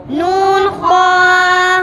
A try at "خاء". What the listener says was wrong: खो को मोटा करके खो